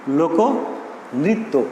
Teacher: মধ্য অয়ের পরে রিকার থাকলে সেই অয়ের উচ্চারণ হবে ও এর মতো। যেমন লোকনৃত্য, লোকনৃত্য এই শব্দটা এখানে কিন্তু কয়ের সঙ্গে একটি অ রয়েছে।